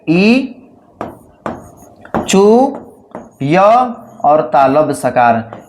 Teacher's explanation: इ य और तालव्य सकार इन चारों का उच्चारण स्थान जो होता है वह क्या होता है? तालु होता है।